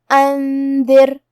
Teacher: حرف الدال کی ادائیگی زبان کے سر اور اوپر والے دانتوں کے اندرونی کناروں سے ہے. آخری میں حرف الراء کا حکم ہے ترقیق کیونکہ اس پہ جزم ہے لیکن اس کے پہلے والے حرف کے نیچے دال کے نیچے زیر ہے تو ہمیں را کو پتلی آواز میں پڑھنا ہے. · اخفاء کا معنی ہے چھپا دینا تو ہم یہ نون ساکن کو چھپاتے ہوئے لیکن غنہ کے ساتھ یہ حکم کو ادا کریں گے